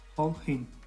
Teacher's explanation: This is very conventional pronunciation, done on words that start with H. In this, the H is removed and the two words are joined without space.